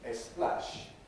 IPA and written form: eˈsplæʃ (splash)